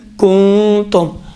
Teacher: یہاں پر کیا ہوگا، خود ناک کے بانسے کے اندر ہی نون مخفی رہے گا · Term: اخفا